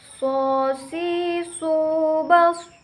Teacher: Cara mengucapkannya sama, tetapi yang membedakan yaitu suaranya menebal saat melafalkan huruf sod